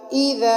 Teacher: بالکل دونوں دانتوں کے درمیان میں زبان کا کنارہ آئے گا اور پھر ذال ادا ہوگی